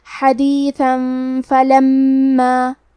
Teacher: ہم تنوین کو چھپاتے ہوئے اور غنہ کے ساتھ یہ حکم کو ادا کریں گے · کلمت فلما میں میم پہ تشدید ہے تو ہم 2 حرف کے برابر میم کو پڑھیں گے · ہم کلمت حدیثہ پہ رکیں گے تو تنوین زبر پہ مد الف سے رکیں گے